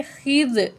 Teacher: خا کو ہیوی پڑھیں گے، زال کے ساتھ ملا کے پڑھیں گے